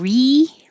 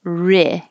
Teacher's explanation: Instead of re, where your tongue is very high, ri. Keep your tongue lower.